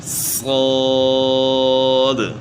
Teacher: تو صاد میں جو ہے نا جو غلطی ہو رہی ہے اس سے ہم نے بچنا ہے، یعنی ہونٹ استعمال نہیں کرنے، سواد نہیں پڑھنا، یعنی ہونٹ گول نہیں کرنے، بلکہ جتنے بھی موٹے حروف ہیں ان میں زبان کو تالو کی طرف اٹھانا ہوتا ہے، بعض میں زبان کے درمیان اٹھتا ہے، بعض میں زبان کی جڑ اٹھتی ہے۔